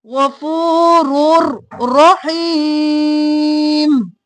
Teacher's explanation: لام اور رو پر بغیر غنہ کے ادغام ہوگا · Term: ادغام بلا غنہ